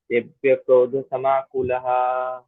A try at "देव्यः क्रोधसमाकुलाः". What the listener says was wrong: Kulaha. Yeah, but there is also dirgham. Kulaha. You're saying kulaha. It's not kulaha. It is kulaha. Kulaha.